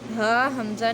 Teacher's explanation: حلق کے جو آخری والا حصہ ہے، وہ جو سینے کی طرف سے نکلتا ہے، وہ ہا اور حمزہ وہاں سے ادا ہوتے ہیں۔